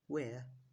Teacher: your mouth will start on the position of the a sound and finish on the position of the r sound in the Indonesian sound system there is no air next is